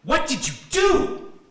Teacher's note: I'm also stressing the what as you can see by how long and intense that word became · what gets stressed and elevates the pitch of the entire utterance